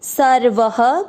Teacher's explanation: चौथा चरण देखेंगे अब स व के ऊपर है आधा र, उस आधे र को स के साथ पढ़ेंगे सर, व में अ मिक्स करेंगे सर्व, व में अ की मात्रा तो विसर्ग को पढ़ेंगे ह